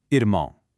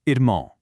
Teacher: It's kind of like saying ear-moan, but with a heavily nasalized finish. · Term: nasal sound